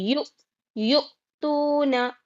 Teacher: ہے جلدی پڑھیں گے یہاں پہ یو صرف جھٹکا لینا اور حمزہ کی آواز سینے کی طرف سے آتی ہے تو ویسا نکالنا ہے